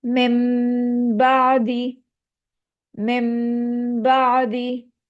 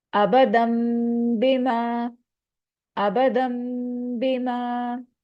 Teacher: نون ساکنہ کے بعد اگر با آ جائے تو نون ساکنہ کی آواز میم میں بدل جاتی ہے ہمیشہ